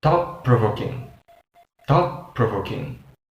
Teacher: So, we just say thought-provoking with T sound, but if we put together like complete words, the T sound at the end of the word thought isn't pronounced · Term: assimilation